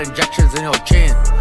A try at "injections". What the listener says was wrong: You can't say injunctions in your chin if you can't pronounce injunctions, and you're saying inject. So you said injunctions instead of saying injections, right?